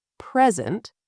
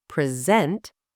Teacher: the word present, stressed on the first syllable, present, is a noun, a gift, something you give. The same word, stressed on the second syllable, present, is a verb, to present, to show or deliver something.